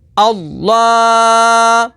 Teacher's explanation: حمزہ لام زبر ال، الف پر کوئی حرکت یا جزم آ جائے تو اسے حمزہ پڑھیں گے، اور اسم جلالت اللہ عز و جل کے لام سے پہلے زبر آ جائے تو اسم جلالت اللہ عز و جل کے لام کو پر یعنی موٹا پڑھیں گے · لام کھڑا زبر لا، اللہ، لام کے اوپر تشدید ہے تو اسے 2 دفعہ پڑھیں گے، اور لام کے اوپر کھڑی حرکات ہے تو کھڑی حرکات کو حروف مدہ کی طرح ایک الف یعنی 2 حرکات کے برابر کھینچ کر پڑھیں گے۔